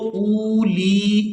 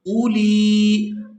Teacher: حمزہ کو نہ تو ہم جھٹکے کے ساتھ ادا کریں گے اور نہ ہی اس کو کھینچ کر ادا کریں گے ، اس کو بالکل نرمی کے ساتھ ادا کیا جائے گا،